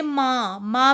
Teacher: माँ में भी नाक और मुंह दोनों से आवाज़ आ रही है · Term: अनुनासिक